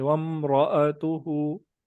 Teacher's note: وَامْرَأَتُهُ کا جو را ہے اس کو پر کریں گے موٹا کریں گے